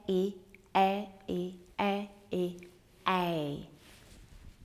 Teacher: This vowel begins with E and glides to I.